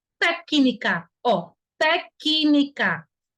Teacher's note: Mas percebam que existe o som de C, ó. Té, que, tem até um som com I desse C, técnica, ó, técnica.